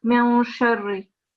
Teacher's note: you don't pronounce the noon, but it's a nasal sound in your mouth